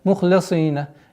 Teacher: Мухлисина. Ха твердый, сад твердый, и поэтому огласовка кесра легко теряется.